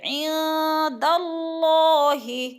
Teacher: ادھر اخفاء ہوگا، ناک میں آواز لے جائیں گے، عند اللہ، اللہ کو پر پڑھا جائے گا، اس لیے کہ اللہ سے پہلے حرف دال کے اوپر زبر ہے تو اللہ کو پر کر کے پڑھیں گے۔ عہدن، عہدن، عہدن